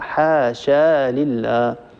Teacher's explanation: حينما يصل حاشا باللام التي بعدها يصلها بألف